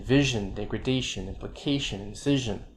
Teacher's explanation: suffixes suffixes that begin with i ignation vision degradation implication incision before the ion ending the stress is on the syllable before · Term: eye stem suffixes